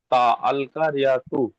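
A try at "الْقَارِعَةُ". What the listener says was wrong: আল ক টান দিবেন তো। আল করিআতু, শুধু হ্যাঁ শুধু কফে টান হবে, অন্য জায়গায় কোথাও টান হবে না। আল করিআতু।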